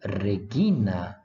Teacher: ela tem o valor de uma oclusiva velar sonora